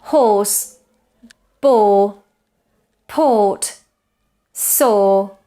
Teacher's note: It's even more close than Spanish O. Notice my lips are very rounded and there is a lot of tension. O. Some examples with this vowel would be horse, bore, port, saw.